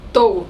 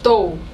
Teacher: It sounds like there's a lot less aspiration the way she pronounces the T.